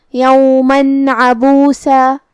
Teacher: کلمت عبوسا میں حرف العین کو ہم حلق کے درمیان والے حصے سے پڑھیں گے. آخری میں سین پہ تنوین زبر ہے.